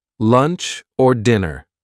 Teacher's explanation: the word or gets reduced, gets shortened, gets linked to a word before or a word after